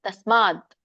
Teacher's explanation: ತಸ್ಮಾದ್ ಸಕ್ಕೆ ಮವತ್ತಿದೆ. ಸ್ಮಾದ್ ಇಲ್ಲಿ ದ ವ್ಯಂಜನ ಇದೆ, ಹಾಗಾಗಿ ಪೂರ್ಣ ಹೇಳ್ಬೇಡಿ. ತಸ್ಮಾದ್ ಅರ್ಧ ಹೇಳ್ಬೇಕು.